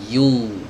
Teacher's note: Kalau di sini startnya dari tengah lidah, i-nya ya, tengah lidahnya naik, baru diarahkan ke dhammah